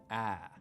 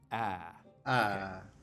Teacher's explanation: we make it with the tongue cupped down low and towards the front of the mouth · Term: Trap vowel